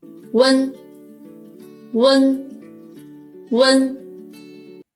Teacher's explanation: we need to first produce oo sound and then quickly glide to say n. And make sure the air comes out from the nasal capacity because it's a nasal compound final.